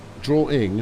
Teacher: obviously it does have an intrusive R